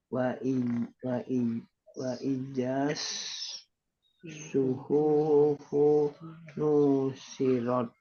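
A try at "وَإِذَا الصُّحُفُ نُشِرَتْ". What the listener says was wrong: Nah, suhufunya pendek ya. Suhufu nusyirat. Tapi fu-nya juga pendek. Semuanya pendek ini. Wa idza suhufu nusyirat.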